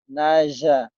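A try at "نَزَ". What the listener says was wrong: Naza. Bukan naja. Naza. Naza. Naza. Z-nya. Naza. Naza. Naza.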